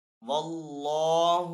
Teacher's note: اللہ عز و جل کے نام کو یہاں پہ پر پڑھیں گے کیونکہ پہلے والے حرف کے اوپر زبر ہے